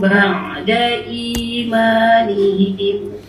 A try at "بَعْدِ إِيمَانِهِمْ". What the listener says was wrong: bunyi ain kan. Ba'da imanihim.